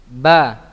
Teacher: bertemunya antara kedua bibir dalam keadaan tertutup ya, dalam keadaan tertutup, yaitu huruf ba